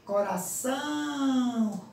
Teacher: Apertar o nariz, né? Ao pronunciar a palavra, nós sentimos que o som também sai pelas fossas nasais. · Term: som nasal